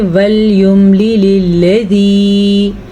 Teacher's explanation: لام بھی نرمی سے پڑھا جاتا ہے, ذال بھی نرمی سے پڑھا جاتا ہے, اور یا مدہ کو کھینچ کے پڑھیں گے